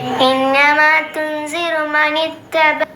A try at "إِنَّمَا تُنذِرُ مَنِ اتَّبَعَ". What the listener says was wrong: വീണ്ടും തുൻസിറു സഇന്റെ ഉച്ചാരണത്തിലേക്ക് പോയിട്ടുണ്ട്, ശ്രദ്ധിക്കണം.